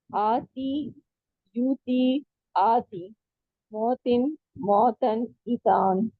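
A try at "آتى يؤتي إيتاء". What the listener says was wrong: آتا ہے پہلے، آتی نہیں آتا.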